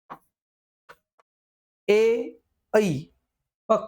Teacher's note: बघा आपले जे संयुक्त स्वर आहेत ए आणि ऐ ए ऐ कंठ आणि ताळूचा याठिकाणी वापर होतोय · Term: कंठ तालव्य